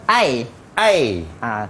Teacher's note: Separa bundar. Dia tak bundar sangat, dia tak hampar sangat.